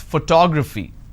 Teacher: in this case i stress on the second syllable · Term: word stress